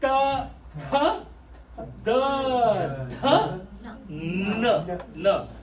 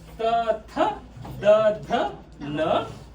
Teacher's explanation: What is common in this row? Tongue touching the teeth. The row of teeth.